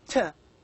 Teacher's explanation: these are sounds formed with the front part of the tongue on the alveolar Ridge · you can feel that the front part of the tongue touches the area which is behind the upper front teeth alveolar Ridge that area is called as alveolar Ridge - again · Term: al Villiers